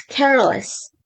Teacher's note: Care becomes careless with the stress on care